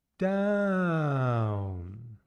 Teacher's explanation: I'm going to use the word down and come down in pitch from a higher sound to a lower sound.